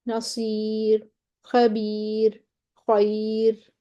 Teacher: را ساکن ما قبل یا ساکن آ گیا، باریک کر دیں